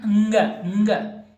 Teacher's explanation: एक तो उच्चारण स्थान नासिका, दूसरा क्या होगा? क वर्ग का होने के कारण कंठ। क्या होगा? इसका उच्चारण स्थान कंठ।